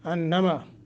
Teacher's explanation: انما نون مشدد ہے، یعنی نون کے اوپر شد ہے، تو یہاں کیا کریں گے؟ غنہ کریں گے۔ آواز کو ناک میں لے جا کے غننے کا مطلب ہے جب پڑھتے ہوئے وہ گنگناہٹ کی، جی اس کو غنہ کہتے ہیں۔